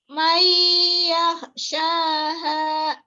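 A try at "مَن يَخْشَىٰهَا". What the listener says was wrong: Khoknya Bu. Khoknya kurang kuat.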